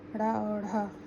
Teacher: पांचवा, उत्क्षिप्त व्यंजन। जिन व्यंजनों के उच्चारण में जिह्वा की उल्टी नोक तालु को छूकर झटके से हट जाती है, उत्क्षिप्त व्यंजन कहलाते हैं।